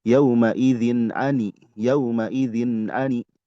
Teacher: Ini ada tanwin menghadapi ain. Itu izhar halki.